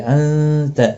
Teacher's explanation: ایک الف کی مقدار کے برابر کھینچ کر پڑھیں گے، انت نون ساکن کے بعد حروف اخفا کا تا ہے، اخفا حقیقی ہوگا